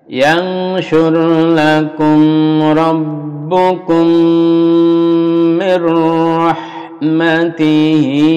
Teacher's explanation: mim bertemu mim, idgham mimi atau idgham mislain, dilebur, didengungkan lalu dipanjangkan dengungnya